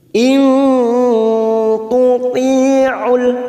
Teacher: ada kasrah bertemu ya sukun 2 harokat, kita panjangkan